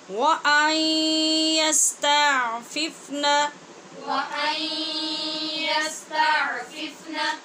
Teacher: نون ساکن کے بعد یا حروف یرمالون میں سے ہے، اس لیے غنّے کے ساتھ ادغام ہو رہا ہے.